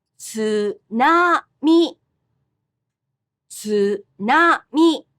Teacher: in Japanese, the pitch accent is the same for the second and third syllables. tsunami, tsunami.